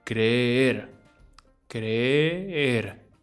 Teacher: In Spanish, when you see a double E, it just means that you say the vowel twice, with a small break in between.